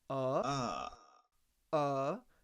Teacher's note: this central near open sound